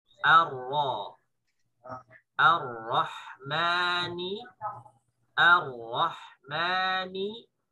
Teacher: Kalau kita baca dengan O berarti tebal. Bacanya A tipis ketemu Ro tebal.